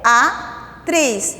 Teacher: Na hora da escrita, tá ali. Mas quando eu faço a pronúncia dessa palavra, as vogais ficam em sílabas diferentes, ficam em sílabas separadas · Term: hiato